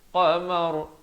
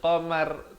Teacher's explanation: Kalau waqaf, ra tu jadi tebal.